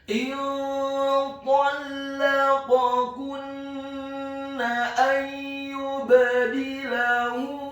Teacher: Huruf kaf-nya dibaca tipis dhammah 1 harokat. Kemudian huruf nun-nya ditasydidkan dengan gunnah atau dengung seperti mat atau panjang 2 harokat